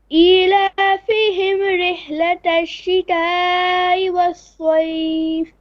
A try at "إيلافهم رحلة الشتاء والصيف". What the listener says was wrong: Now when you say رحلة الشتاء, make sure the mad doesn't join onto the hamza. If you say shita'i, ta'i, that's not correct. Shita'i. The hamza has to be very clear with its own makhraj, okay? And then wassa, not waswaif. Don't say suwaif. Saif, wassaif.